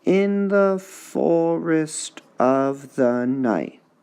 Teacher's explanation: here we have trochaic trimeter with a masculine ending